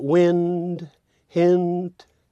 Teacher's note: It's probably the most perfectly related, in terms of perfect rhyme, strong family rhyme, because it contains the nasal N and then simply tags with the plosive. And so that wind, hint, really sounds like a perfect rhyme.